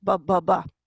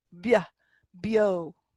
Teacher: the B and the C, when they're slenderized, they take on a Y sound afterwards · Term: slender B